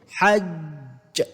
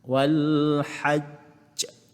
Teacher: Jadi lantunan tu dia agak kuat. Lantunan yang dibacakan pada huruf jim ini dibaca dengan kuat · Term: qalqalah